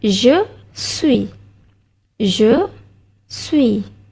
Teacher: S yang di belakang kita tak bunyikan